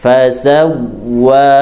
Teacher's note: huruf waw ada tasydidnya hati-hati jangan didengungkan tapi dimasukkan ke huruf waw